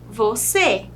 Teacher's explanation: O circunflexo, que também nas vogais e ou o, vai indicar que é mais fechadinho